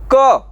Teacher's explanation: क, तो वो तो ओष्ठ है नहीं, वो कंठ से आ रहा है।